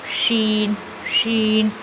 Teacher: ادائیگی، جس حرف میں یہ صفت پائی جائے گی اس حرف کی ادائیگی کے وقت آواز منہ میں پھیل جائے گی، سارے منہ میں پھیل جاتی۔ شین، شین، تو یہ صرف شین میں پائی جاتی ہے۔ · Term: تفشی